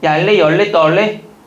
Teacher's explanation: 유음화가 돼서 얄레가 되죠.